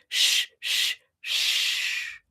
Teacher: My tongue is creating friction kind of behind the bump, behind my teeth.